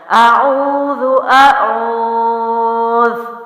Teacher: واو مد ہے اس لیے میں نے اس کو او کو لمبا کیا،